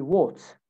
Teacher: A sound in British accent is actually an O sound. So in words like what, you say what, okay?